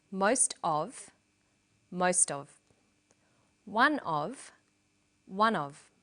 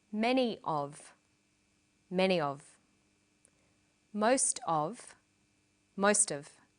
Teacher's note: Notice that of in these phrases is unstressed.